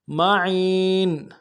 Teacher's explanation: سے ادا کریں گے، عین کو یا کے ساتھ ملانا ہے، عین موٹا کریں گے، یا مدہ ایک الف مقدار میں کھینچیں گے، نون کی تنوین میں غنہ کریں گے، وقف کی صورت میں نون کو ساکن کریں گے